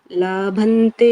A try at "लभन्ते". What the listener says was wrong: Labhante. So in Sanskrit, if we say la, it changes the meaning. So labha means profit. Labha means you found something, achieved something. Labha. Labha is achieving. Labha means profit. So it changes the meaning when you say ah.